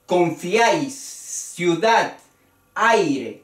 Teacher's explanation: es en un solo golpe el diptongo y el triptongo